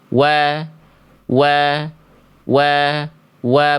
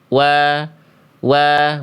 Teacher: Pastikan huruf wau dibaca maju ya, eh monyong ya.